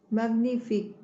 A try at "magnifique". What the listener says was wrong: No. Hay un error. La G y la N, ¿cómo se pronuncia la G y la N? Magnifique. Cuando yo veo una G y una N, no tengo por qué pronunciar la G y no tengo por qué pronunciar la N, porque la G y la N se transforman en una ñ.